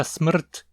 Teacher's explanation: a palavra smrt em tcheco, que possui um R como núcleo. Começamos com um S, que tem valor de 3, depois um M com valor de 7, e aí chegamos no núcleo, o R, que tem valor 8.